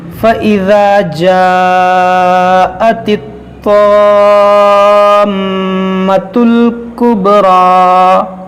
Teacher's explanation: حروف مدہ کے بعد میم پر سکون اصلی ہے، یہاں پر مد لازم کریں گے ہم